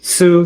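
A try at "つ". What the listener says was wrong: So we have to pronounce the letter T here. Tsu.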